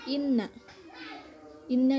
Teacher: dan 191 yang pertama ada Inna Inna ini hukumnya ghunnah karena terdapat huruf nun yang berharakat tasydid dibacanya dengan mendengung dan ditahan sesaat